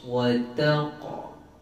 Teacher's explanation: Cumanya qalqala sughra ada dua jenis, satu tebal, satu nipis. Qaf ni kategori qalqala yang tebal, maka kita kena bawa sifat qaf terus.